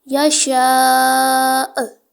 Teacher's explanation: حمزہ ساکن ہے، جھٹکا دے کر پڑھیں گے